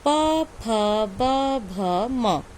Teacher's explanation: पा वर्ग का उच्चारण स्थान है ओष्ठ